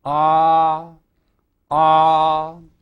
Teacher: it's a sound that is produced by resonations deep in the back of the throat